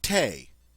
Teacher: the French do not have a th sound represented by the TH. Instead, we pronounce it like a T, as in the French word for tea, te. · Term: T sound